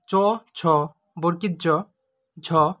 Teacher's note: অগ্রতালু থেকে উচ্চারিত হয় তালব্যজাত চ বর্গীয়